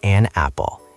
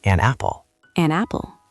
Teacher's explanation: Notice how we link the words, an apple. It almost sounds like one word